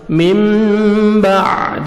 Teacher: نون ساکن کے بعد باہر ہے، نون کو میم میں چینج کریں گے اور اخفا کریں گے جس کو بولتے ہیں اقلاب